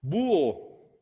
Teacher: Exactamente, hay un hiato, porque como la H no existe, esto es un hiato. Vocal cerrada, vocal abierta, el acento está en la cerrada.